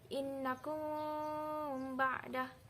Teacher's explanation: ikhfa syafawi di sini terletak pada kalimah di antara kalimah innakum dengan ba'da. Dan ianya juga perlu didengungkan dengan kadar 2 harakat